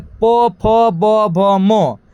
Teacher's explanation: प वर्ग का उच्चारण स्थान होता है ओष्ठ